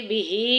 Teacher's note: बिही खड़ी ज़ेर एक अलिफ के बराबर लंबा करेंगे।